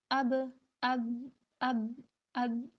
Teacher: ہمارے دونوں ہونٹ جو ہے آپس میں ملے ہیں، پھر ہمارا جو ہے وہ با ادا ہوگا